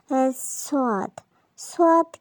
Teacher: সদ সদ কিন্তু মোটা হবে, সিনের মতো পাতলা না। তবে সদের উচ্চারণ মোটা করে পড়তে হবে।